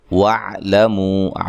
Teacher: عین کو واضح نکالنا ہے، لام کو باریک پڑھنا ہے، منہ پہ منہ و مد ہے، آگے حمزہ ہے تو لہذا یہاں مد ہے، مد جائز ہے، ٹھیک ہے.